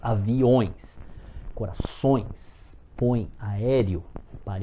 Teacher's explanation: quem vem primeiro é a vogal e que vem depois é semivogal · Aviões, o E começa a ter um som de I.